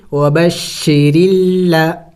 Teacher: را کے نیچے زیر ہے تو را کو باریک کر کے پڑھیں گے